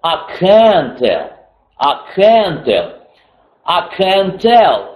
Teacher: Ударение будет на I can. Там будет два равносильных почти ударения.